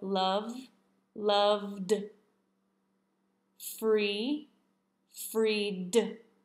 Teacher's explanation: We do not want to add an extra I before the D and make it sound like an id. It is just a D sound.